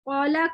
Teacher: الف موٹے کو اتنا موٹا نہ پڑھا جائے کہ واو سنائی دے, کہ انسان قولا کو بالکل کولا کر کے واو پڑھنا شروع کر دے.